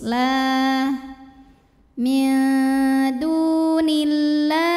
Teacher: Alif lamnya dinamakan dengan alif lam syamsiyah, karena alif lam menghadapi huruf syamsiyah yaitu lam, maka alif lam tidak perlu dibaca